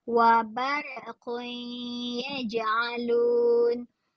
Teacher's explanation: Tanwin pada huruf qaf tu bertemu dengan ya. Boleh dengung.